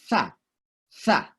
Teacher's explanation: Jadi kayak menggigit ujung lidah kita tapi dilepasin, tha. Biasanya dalam bahasa Inggris ditulis TH, tapi dalam bahasa Indonesia TS, tha, ya, tha.